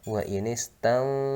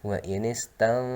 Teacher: mulut sudah moyong duluan ya, jadi bersiap menyebut huruf so yang tebal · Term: ikhfa